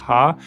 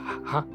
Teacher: Our own laughter is a bit more voice, ha. Theirs is a bit more breathy